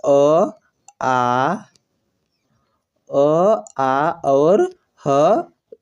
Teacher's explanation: कंठ से क वर्ग तथा विसर्ग अ, आ और ह जो है वह उच्चारित होते हैं